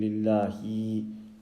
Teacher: If we overstretch the kasra of the ha, we will end up adding a ya. Ya with a sukoon.